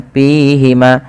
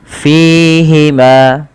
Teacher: Artinya bibir kita merapat tidak. Tapi dia harus ada rongga yang dikeluarkan untuk mengeluarkan nafas kita.